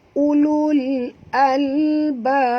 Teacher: maka qalqalahnya mesti kita jelaskan dengan lebih kuat kerana dia berada di hujung, ya. Ini namanya qalqalah kubra, ya.